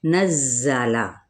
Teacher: اس میں صفیر ہے، یعنی سیٹی کی سی آواز آئے گی